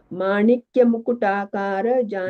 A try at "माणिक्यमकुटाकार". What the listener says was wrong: Manikya Makutakara, not Mukutakara. Manikya Makutakara. There are several versions in several texts.